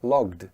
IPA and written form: lɒgd (logged)